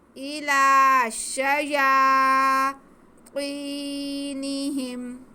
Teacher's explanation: یا کو ہم ایک الف کے برابر کھینچ کے پڑھیں گے